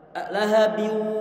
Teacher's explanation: untuk tanwin bertemu dengan wawu, ini bibir harus dimonyongkan karena dia bacaan itu bigunnah